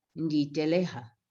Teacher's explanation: that's a process there of hardening of the sound L to a D